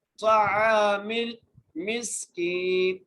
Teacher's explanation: عین کو ایک الف کی مقدار کھینچ کے پڑھیں گے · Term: الف مدہ